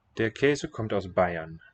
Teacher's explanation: the R in the name, Bayern, is not sounded as a consonant